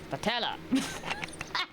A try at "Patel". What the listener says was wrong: Patel. There's no E on the end. Or A.